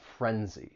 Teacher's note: it just has two syllables the stress is on that first syllable